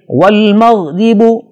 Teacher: را کے نیچے زیر ہے، اسے بھی باریک پڑھیں گے۔